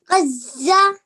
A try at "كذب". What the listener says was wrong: So do you know that dal is pronounced softly? it's pronounced when you touch your tongue to your upper teeth.